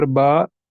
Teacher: الف مدہ۔ اس کا مطلب جو کھڑا زبر ہوتا ہے وہ الف مدہ کے برابر ہوتا ہے، یعنی ہم جو اب کھڑی حرکات ہیں ان کو ہم حروف مدہ کی طرح ٹریٹ کریں گے، ان کو ہم ایک الف کے برابر کھینچ کر پڑھیں گے۔